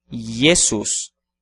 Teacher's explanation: que utilizamos a letra J na palavra Jesus de qualquer forma a pronúncia é i e não J mesmo que que a grafia escolhida seja aquela que utiliza a letra J